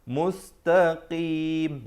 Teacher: Makhraj huruf qaf dan kaf dia hampir-hampir dekat. Qaf di belakang sedikit. Qaf di belakang sedikit lagi.